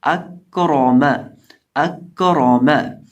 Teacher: اب اس لفظ کے اندر ہمارے پاس ہے حمزہ کاف را اور میم، تو اس لفظ کے اندر ہمارے پاس جو را ہے اس کو ہم موٹا کر کے پڑھیں گے اور باقی تمام حروف کو بریک پڑھا جائے گا. تو آواز آئے گی اکراما اکراما.